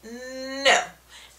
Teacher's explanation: our other sound is the n sound so it's the and you can definitely tell that your tongue is touching um the gums behind the teeth